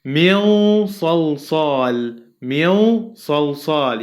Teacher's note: Mil salsal, yeah, because nun sakina in this example followed by sad letter, so I pronounce it with a heavy ghunna